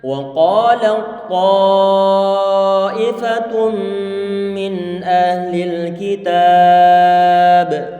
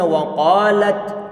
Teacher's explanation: huruf ta secara totalitas telah dimasukkan ataupun diidghamkan ke dalam huruf ta, sehingga menjadi satu huruf ta yang bertasydid